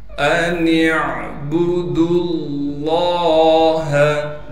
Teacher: لفظ اللہ کے لام کو موٹا کر کے پڑھیں گے اس لیے کہ اس سے پہلے دال پر پیش ہے